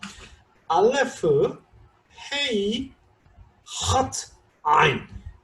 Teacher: 이게 목에서 목구멍을 형태를 생각하면요, 점점점 소리가 밑으로 내려갑니다. 알레프부터 아인까지 점점 밑에서 소리가 나요. 알레프는 목을 닫았다가 사실 열어주는 자음입니다. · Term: 목구멍 소리